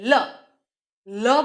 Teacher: લ બોલતાની સાથે જ જીભ ત્યાં ગાંઠલામાં ફરીથી બેસી જાય છે, એ જ સમય પાછી બેસે છે. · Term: પાર્શ્વિક ધ્વનિ